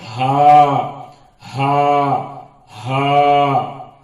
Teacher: یہ ہا، یعنی اپنے سینے میں ہوا کو گھما کر نکالنے سے نکلتا ہے ہا. اس میں تیزی نہیں رہتی ہے، بلکہ ہلکا پن رہتا ہے، اور سینے میں اس کی آواز ہوا گھوم کر نکلتی ہے